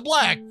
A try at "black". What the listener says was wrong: You're just saying that B a little too hard. Dude, you said black. Hard B.